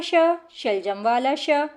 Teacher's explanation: श जो है वह तालु को स्पर्श करती है शलजम वाला